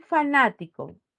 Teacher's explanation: Es una palabra esdrújula, ya que la mayor fuerza de voz está en na y por lo tanto esta sílaba se halla en la antepenúltima.